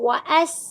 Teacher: हमजा की ज़बर को सीन साकिन के साथ मिला लेंगे। वस सीन की आवाज सीटी की सी होती है। · سین کی آواز سیٹی کی سی ہوتی ہے، تیز ہوتی ہے